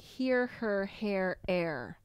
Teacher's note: some have an H and some don't and that for Italians is difficult to hear